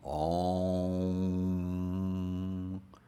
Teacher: we close our lips in front, but also we close the back of our tongue up against the back of the roof of our mouth, so that it's almost like we're wrapping our mouths around a little walnut.